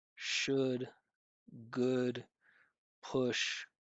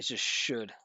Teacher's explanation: no L sound in should